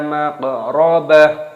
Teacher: Maqrabah, ba-nya di sini dibaca, taknya dimatikan diganti dengan huruf H.